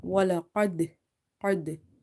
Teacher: Now dal is a qalqala letter and it's sakin as well, and the word is ending with the qalqala letter, so here qalqala will be strong